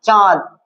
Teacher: নাক দিয়েও বায়ুটা আসছে আর মুখ দিয়েও না বায়ুটা আসছে, বুঝতে পারলি? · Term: অনুনাসিক স্বর